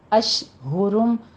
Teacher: شین کے اوپر تفشی کیجئے، آواز پھیلنی چاہیے